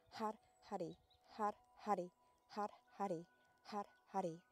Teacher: you're rolling the R, the tip of the tongue touches the roof of the mouth